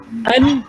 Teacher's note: Alif nun an, kita dengung kat hidung. Tak boleh. An kan kan.